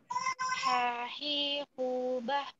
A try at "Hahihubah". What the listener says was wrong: Oke, bagus.